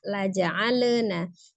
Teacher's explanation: lamnya bersifat lunak saja tawasud atau bainiyah. Miringkan ujung lidahnya. La ja'alnahu, ya, nanya 2 harakat. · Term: lam sukun